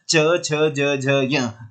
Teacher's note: तो आप जब बोल के देखिए च छ ज झ य, तो आपकी जीभ तालु पर टकराती है।